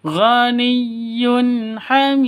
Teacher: Karena di akhir berarti qalqalah kubra. Hamid harus dipantulkan ke huruf qalqalahnya.